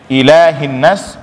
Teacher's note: Nah, sama termasuk di sini nas nun tadi, gunnah tadi, kalau ini sudah kita panjangkan, ini juga harus panjang sama panjangnya. Kemudian lanjut ilahin nas, itu ada hamzah i. Jadi jangan hilang, jangan ila, ya.